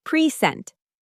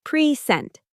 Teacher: That's a noun stress on the first syllable.